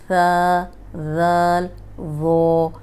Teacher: یہ نرم حروف ہیں، ثا، ذال، ظو. اور یہ نرم حروف جو ہیں اوپر سامنے کے جو 2 دانت ہیں ان کے کنارے پہ زبان رکھ کے ادا کریں گے، سیٹی کی آواز نہیں آئے گی. اگر ذرا سی بھی ان میں سیٹی کی آواز آئے گی تو یہ غلط ہو جائیں گے.